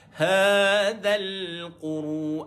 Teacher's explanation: Dan ada sifat getar pada ra.